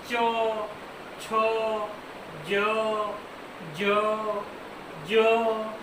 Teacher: ये हमारी जो जीभ होती है वो कहाँ चिपकती है? तालु से चिपकती है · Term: तालु व्यंजन